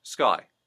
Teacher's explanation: the I, making sure that doesn't become an oi, a strong oi